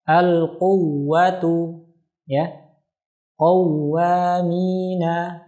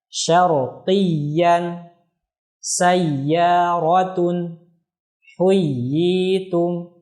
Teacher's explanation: yang harus dinabr itu adalah huruf wawu atau ya yang bertasydid